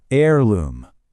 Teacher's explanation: The H at the beginning is totally silent. So it starts with a vowel sound.